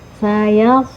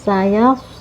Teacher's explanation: Nah, di sini ada sifat sofir ya. Sod ini huruf sofir, jadi harus ada desisan atau suara yang tajam ya.